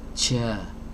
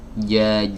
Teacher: tempat keluarnya huruf jim itu ada di bagian tengah lidah. Jadi kalau ini diumpamakan lidah, bagian tengahnya itu di sini, ini harus benar-benar keluar dari tengah sini.